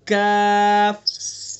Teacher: کاف کا مخرج ہے زبان کی جڑ سے کچھ اوپر کا حصہ، زبان کی جڑ سے کچھ اوپر کا حصہ اور اس کے مقابل اوپر کا تعلق کاف.